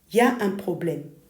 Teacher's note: The phrase for there is, il y a in French, loses its pronoun entirely and just becomes y a.